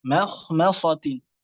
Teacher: hati-hati mim ini jadi tebal di antaranya pada kata makhmasatin